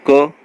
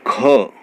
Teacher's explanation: ख में हमारे मुंह से ज़्यादा वायु निकलती है, तो ये महाप्राण हुआ